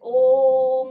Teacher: जोर से आवाज मारते हैं लंबी जैसे ओम करके यानी कि उच्चारण इसका लंबा जाएगा तो ये आपका प्लुत स्वर है